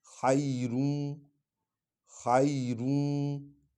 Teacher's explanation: را پر 2 پیشیں ہیں، آگے وا ہے اس پر شد ہے، تو اس کو نون غنہ کرنا ہے اور اس میں ڈالنا ہے، ٹھیک ہے، ادغام کرنا ہے، اس کو کہتے ہیں ادغام، یعنی ایک حرف کو اگلے حرف میں ڈالنا، مدغم کرنا۔